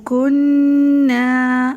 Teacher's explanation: گنہ کی بھی جو ٹائمنگ ہے وہ ایک الف کے برابر ہے۔